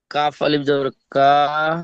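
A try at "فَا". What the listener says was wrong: কাফ নেই, ফা আলিফ, ফা জবর ফা। আলিফ জবর নেই, ফা জবর ফা, হামজা খাড়া জবর আ।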